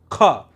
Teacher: जैसे ध्यान से सुनिए, ख बोलिए एक बार, ख। ख जब आप बोल रहे हैं तो थोड़ी रगड़ पड़ रही है कंठ में, ख, ऐसे खार हंगार हकार की ध्वनि जो है सुनाई पड़ रही है। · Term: महाप्राण